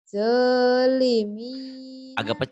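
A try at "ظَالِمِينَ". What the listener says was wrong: Agak rapuh ya. Zo. Jangan do. Zo. Z-H-O. Tapi jangan dimonyongin ya ngucapinnya. Ditarik ke dalam lidahnya. Zo.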